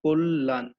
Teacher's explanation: এখানে কয়ের সঙ্গে একটি অ যুক্ত আছে এবং এই কয়ের সঙ্গে যে অটি যুক্ত আছে, এর পরের ধ্বনিতে এটাকে বলা হইতেছে আদ্য অ, এবং এর পরের ধ্বনিতে আছে হচ্ছে তোমার জ ফলা, এবং এই জ ফলাটি থাকার কারণে আদ্য যে অটি আছে এটিও কিন্তু চেঞ্জ হয়ে ওকারে পরিণত হয়েছে